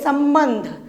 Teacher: अयोवा वर्ण में अनुस्वार मतलब मन, जैसे संबंध तो हम आधा नाक से उच्चरित करत हन, तो आधा म आधा न